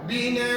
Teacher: Bila berhenti pada hamzah baris dua di atas, maka kamu kena baca dengan dua harakat.